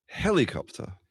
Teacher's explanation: you're pronouncing your R, right? Your R is really clear compared to mine.